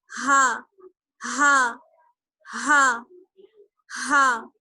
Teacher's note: یعنی سینے کی طرف جو ہمارا حلق ہوتا ہے وہاں سے ادا ہوتا ہے ہا. ہا ہا ہا کو پڑھتے وقت آواز تھوڑی سی بھاری نکلتی ہے. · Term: گول چشمی ہا